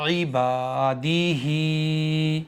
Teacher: आइन ज़ेर ई बा अलिफ ज़बर बा इबा दाल ज़ेर दी इबादी ह खड़ी ज़ेर ही इबादी ही ऐन को नहीं खींचेंगे। बा को एक अलिफ खींचेंगे। दाल को नहीं खींचेंगे। हा को एक अलिफ के बराबर खींचेंगे।